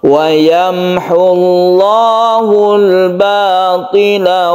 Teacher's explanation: lafdzul jalalah yang sebelumnya dhammah dibaca tebal. Jadi kalau sebelumnya fathah dibaca tebal, sebelumnya kasroh dibaca tipis, sebelumnya dhammah dibaca tebal.